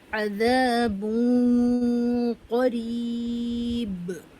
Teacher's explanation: تنوین کی آواز کا اخفا غنہ ہم ہیوی ساؤنڈ کے ساتھ کریں گے